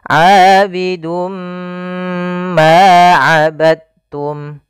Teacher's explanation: huruf mim maka eh pada lafal ini kita cara membacanya adalah kita masukkan tanwinnya kepada huruf mim kemudian ditahan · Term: idgham